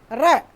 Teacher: किस लिए कहते हैं इसको लुंठित? रे का जब हम उच्चारण करते हैं ना, तो हमारी जीभ क्या है, एक बार ऊपर से एकदम झटके के साथ लुढ़कती है। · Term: लुंठित व्यंजन